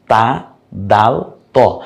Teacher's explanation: জিহ্বার আগা সামনের উপরের দুই দাঁতের গোড়ার সঙ্গে লাগিয়ে